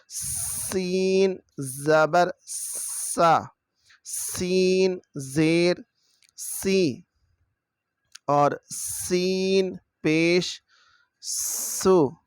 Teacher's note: یہ ہے سین، سیٹی کی آواز آئے گی